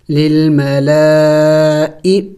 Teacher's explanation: لام کے اوپر کڑی زبر بھی ہے اور مد بھی ہے، تو اس کو ہم نے خوب لمبا کرنا ہوگا، اس لیے کہ اس مد کو تو 5 الف کے مقدار کھینچنا ہوتا ہے ، لمبا کرنا ہوتا ہے، اوپر سے کڑی زبر بھی ہے